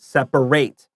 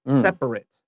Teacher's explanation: So the ATE sounds like a short I, separate.